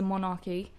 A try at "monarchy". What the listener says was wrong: It's just monarchy, not monarchy. Monarchy. You separated the words there. Monarchy.